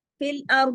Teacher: فی الارض میں را موٹا دعاد موٹا، دعاد کی زیر کو نہیں پڑھیں گے ہم، یہاں عارضی سکون کر رہے ہیں لیکن دعاد کو ہم ہر صورت موٹا ہی پڑھیں گے۔